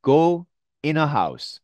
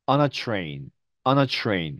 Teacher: th 발음이 앞에 있는 n 발음에 영향을 받습니다. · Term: n 발음으로